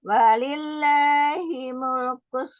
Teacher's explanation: Lam itu sifatnya dia tengah-tengah. Antara siddah dan roghah. Tawasud atau bainiyah.